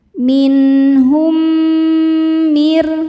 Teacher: Cara bacanya mim yang sukun dileburkan ke mim yang hidup disertai dengung, bunyi M tahan. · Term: idgham mimi